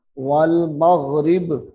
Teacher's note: با کو ساکن کر دینا ہے، با کے اوپر پیش ہے۔ جب ہم نے یہاں پہ رکنا ہے، وقف کرنا ہے، ٹھہرنا ہے، تو اس با کو ہم ساکن کر دیں گے۔